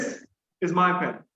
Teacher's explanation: i'm putting stress on this right means i'm talking about this particular thing there are other pens as well but i'm talking about this